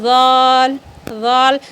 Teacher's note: دانتوں کے کنارے میں، اوپر والے دانتوں کے کنارے میں آپ زبان کو ٹچ کرو تو ذال ادا ہوگی